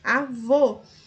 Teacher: a última sílaba é a mais forte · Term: oxítono